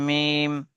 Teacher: দুই ঠোঁটের শুকনো অংশ মিলিত হয় উচ্চারিত হয় মিম